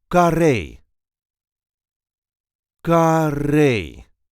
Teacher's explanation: There is a light emphasis on the last syllable car.